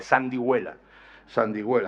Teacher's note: antes del ditongo hue, ahí, por eso hay esa G sonora y suave